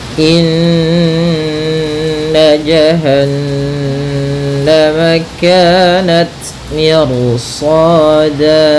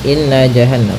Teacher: Pada bacaan inna di sini ada hukum tajwid, yaitu gunnah, yaitu cara membacanya adalah kita menahan suara nunnya ya terlebih dahulu sepanjang 2 harakat lebih sedikit ya, kemudian baru kita baca janya. Inna nah tidak boleh atau jangan dilangsungkan gitu ya, jangan inna jahannam, nanti kurang sempurna dalam menahan gunnahnya.